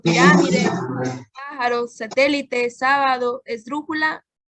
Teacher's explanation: Son aquellas que tienen la sílaba tónica o acento en la antepenúltima sílaba. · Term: palabras esdrújulas